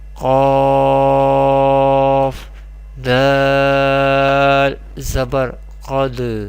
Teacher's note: Here this is Kalkala letter, and when Kalkala Sakina, our sound or our voice will echoes, and Qaf is pronounced with heavy voice because this is mustalia letter.